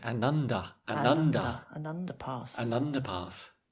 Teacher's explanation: It really sounds like one word, doesn't it?